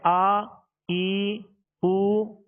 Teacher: اب اس کو تھوڑا سا دراز کر دیا نا، جیسے آ ای او، تو اب یہ حرکت نہ رہی بلکہ اس میں حرف مد پیدا ہو گیا